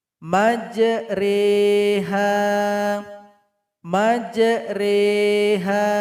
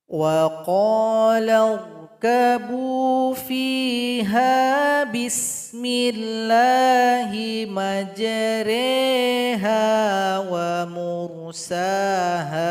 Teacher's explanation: Di bawah huruf ro yang berharokat fathah berdiri ada tulisan kecil, imalah. Maka huruf ro harus dimeringkan berbunyi e dan dipanjangkan 2 harokat.